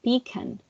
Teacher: then we have a finally an emphasis on introductory syllables so new yorkers may stress the first syllable whereas other dialects may stress the second · New Yorkers may stress the first syllable, whereas other dialects may stress the second. So for example, we have pecan, which is pronounced pecan, but with the New York accent, they would pronounce it like pecan.